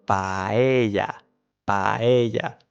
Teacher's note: avoid dragging out the A at the end of the word. · And then the P, it happens the same as with the letter C or T and other sounds. In English, we let some air out when pronouncing the P, for example. In Spanish, that doesn't happen.